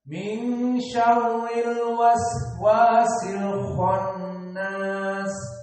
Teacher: Dan juga sin, alwas was, ada rokhawah waktu, dan al-khannas kha mufakhamah, dan nun gunnah, khannas dari hidung, khannas. Maka kalau kita coba tutup hidung kita, al-khannas, tidak bisa membaca, berarti gunnah kita benar.